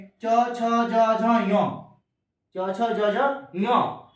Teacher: च वर्ग के जितने भी श्रेणी होते हैं च छ ज ज ञ ये सारे के सारे तालूस होते हैं